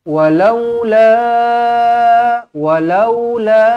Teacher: walaula panjang di sini empat ataupun lima harakat